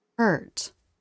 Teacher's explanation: In a stressed syllable, the vowel curves up, then down.